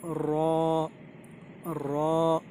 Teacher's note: रा को दोस्तों ज़बान की नोक को बहुत हल्का सा ऊपर वाले दांतों के जो मसूड़े हैं वहाँ पे लगाना है, और मुंह को भर के बोलना है